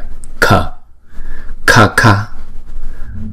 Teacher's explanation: Chữ cờ nhưng mà bật cái hơi ra